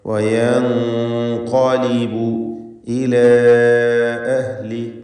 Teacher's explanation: മണിക്കലിൽ തഫ്ഖീം വേണം, കാരണം ഖാഫ് തഫ്ഖീമിൻ്റെ അക്ഷരമായതുകൊണ്ട് ആ നൂനിൻ്റെ മണിക്കലിലും തഫ്ഖീം വേണം. ഗുന്ന മുഫഖമ നൽകിക്കൊണ്ട് വയൻഖലിബു എന്ന് പറയുക.